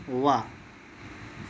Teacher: दंतोष्ठ मतलब दांत और ओंठ से मिलकर, इससे आपका बनेगा वाह, ठीक है, वाह आप इसमें कह देंगे।